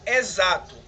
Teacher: exato é escrito com x mas tem um som de z